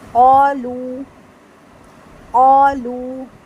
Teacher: اس میں الف مد بھی ہے اور واو مد بھی ہے, اس لیے دونوں کو لمبا کیا جائے گا